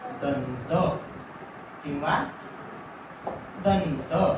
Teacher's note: त, थ, द, ध आणि न या 5 पैकी जर कुठलेही व्यंजन येत असेल कुठल्याही अनुस्वारासमोर तरी त्याचा उच्चार होणार न. त, थ, द, ध, न. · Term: अनुस्वाराचा उच्चार